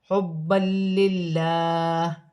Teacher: دال مشدد ہے، جماعوں کے ساتھ ادا کیا جائے گا، حبا للہ، دو زبر کی تنوین میں غنہ نہیں ہوگا، آگے لام مشدد ہے، لام باریک پڑی جائے گی کیونکہ میں زیر گر جائے گی، ہاں ساکن ہو جائے گی۔